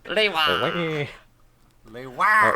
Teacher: Lewa is not Lewa, it is Lewa. Emphasis on the second syllable.